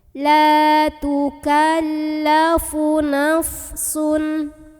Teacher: Maka cara membunyikannya, huruf lam ini dipanjangkan sepanjang 2 harokat saja. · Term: mad tabi'i